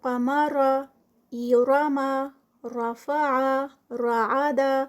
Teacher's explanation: جب راء پر زبر ہو، جیسے کہ قمر، یراما، رفع، رعد، یہ تمام حالتیں جو ہیں وہ راء کے ہیوی والی ہیں، راء کی موٹا پڑھنے والی ہیں، تفخیم والی ہیں